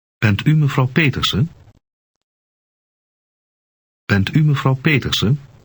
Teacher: Note that the voice of the speaker goes up at the end to indicate a question.